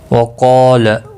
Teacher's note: قاف اور الف دونوں پر پڑھے جائیں گے۔ قاف مستعلیہ ہے، پر پڑھا جائے گا، اور اس کے ساتھ الف پیا ہے، یہ بھی پر پڑھا جائے گا۔